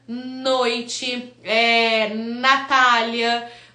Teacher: já é um conto de articulação que ele chama alveolar que a ponta da língua toca a raiz dos dentes incisivos